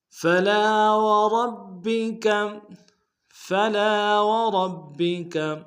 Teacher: وربک میں را کو موٹا ادا کریں گے اور با کے سامنے لائیں گے، با کے اوپر تشدید زور دیں گے · فلا میں لام کے ساتھ الف مدہ ہے، ایک الف دال میں کھینچیں گے